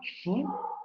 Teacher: Ejemplo, fu, si ustedes pronuncian la fu de fama, se darán cuenta que los labios tocan los dientes superiores. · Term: labiodentales